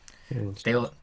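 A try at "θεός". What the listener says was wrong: claro, que aquí se pronuncia Theos. Como con TH así.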